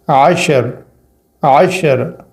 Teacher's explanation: وقفاً اس طرح پڑھیں گے کہ عین کو شین سے ملائیں گے اور را کو بغیر حرکت کے چھوڑ دیں گے